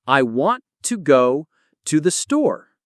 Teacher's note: We stress want. go and store. The rest is said faster. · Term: sentence rhythm